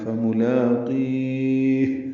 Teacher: یا ساکن کے بعد ہا ساکن کر دیں گے اور اس پہ ہمس ہوگا